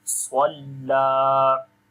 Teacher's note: We long abdan idha swalla. Swad we read in heavy sound, and lam we long due to standing fatha on it.